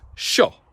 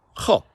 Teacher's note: So just a good example of three very common short vowels in Gaelic that are always expressed too long.